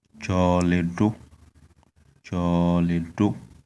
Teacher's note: the tone is on the last vowel o, which means the negation